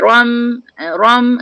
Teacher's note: Ro bari atas tebal, mim tu dimatikan. Jadi nipis.